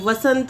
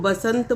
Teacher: व की जगह ब का इस्तेमाल किया जाता है जैसे कि वन वन को बन बोल देते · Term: व और ब का भर्म